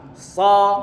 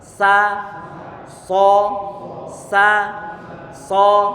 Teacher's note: Kalau nanti pangkal lidah terangkat ke atas disebut isti'la. Berhubung pertengahan lidah dan juga pangkal lidah terangkat ke atas, maka akan terdengar tebal. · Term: idbaq